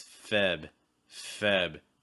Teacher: Notice that in American English, that first R disappears. You're not going to hear it. So it's going to be Feb, and that's also going to be your stress.